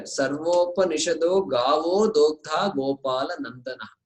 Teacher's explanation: there is a rule that says the Visarga will become O. And when it is preceded by Akara, etc., there is a rule.